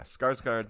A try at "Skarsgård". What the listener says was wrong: I think the K is silent. I think it's Sarsgaard, but